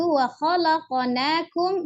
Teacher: Yang qalqalah itu adalah huruf qafnya saja itu wa khalaqnakum